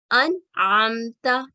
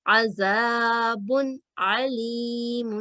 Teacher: اب اس کی ادائیگی کیسے کرتے ہیں کہ نون ساکن اور تنوین کی آواز کو غنہ کی طرح ادا نہیں کرتے، کیونکہ اظہار کا مطلب ہے ظاہر کر کے پڑھنا، تو اس کو ہم غنہ کی آواز کو ادا نہیں کرتے بلکہ 1 سیکنڈ کے لیے صاف اور واضح پڑھتے ہیں